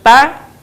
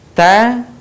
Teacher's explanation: ada udara yang mengalir ketika kita melafalkan huruf tersebut